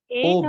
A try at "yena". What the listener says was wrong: Yena, not yena, not ena. Yena, ena, not ena. There's Y before that. Yena.